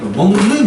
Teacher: 그러니까 받침 비역이 발음상 뭐로 바뀌어요? 같은 비음 계열인 이응으로 바뀌어 버리죠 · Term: 비음화